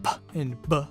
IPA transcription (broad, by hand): p and b